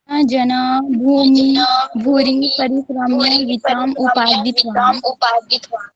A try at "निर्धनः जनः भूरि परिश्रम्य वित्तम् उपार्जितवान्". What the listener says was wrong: भूमि नहीं ना, भूरि।